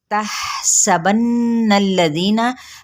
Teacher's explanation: हा पे हम्स हो रहा है